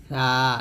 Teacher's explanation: জিহ্বাটা করে দাঁতের আগে লাগিয়ে পাতলা করে উচ্চারণ করতে হবে